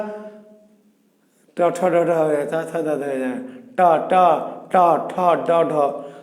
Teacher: যখন আপনি ট ঠ ড ঢ বলছেন, তখন জিহ্বার মাথাটা কিন্তু একটু উল্টে যাচ্ছে, মাথাটা একটু উল্টে যাচ্ছে। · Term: উল্টানো জিহ্বাগ্র